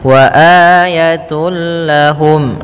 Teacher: tun langsung ke lam, sehingga suara n-nya hilang, langsung masuk ke lam, sehingga langsung dibaca dengan idgham kamil. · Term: idgham bila gunnah